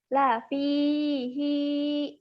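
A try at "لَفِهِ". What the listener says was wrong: Pendek. Ujungnya pendek.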